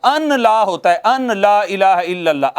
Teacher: نون ساکن کے بعد چونکہ لام آ جاتی ہے نا تو نون کا لام میں ادغام ہو جاتا ہے